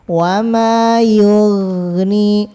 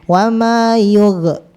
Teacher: gain biar enggak mantul itu dialirkan suara